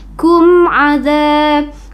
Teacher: Mad thii atau mad asli dibaca Dua harakat naum kumza kumza mim mati bertemu dengan huruf Ain itu disebut dengan izhar syafawi jadi bacaannya jelas ya